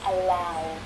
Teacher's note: Right, so if the infinitive verb ends in one of these sounds, then the ed is pronounced as d. Allow, ending in the voiced consonant sound, becomes allowed.